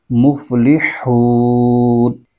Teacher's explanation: حا کی آواز نکالیں گے تو حا حلقے درمیان سے اس کی آواز نکلتی ہے